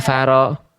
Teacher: Rnya tebalkan dengan faro. Ro ketika berharakat fathah itu harus dibaca tebal. Berarti angkat pangkal lidahnya.